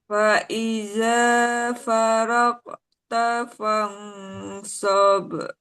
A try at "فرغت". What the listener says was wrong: Oke, huruf ghin dialirkan, Bu. Rogta. Ah, jadi tidak mantul, tidak farogta, tapi langsung di tempat makronya tetap di situ. Rog.